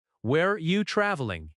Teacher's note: In natural speech, where are you often sounds like where you.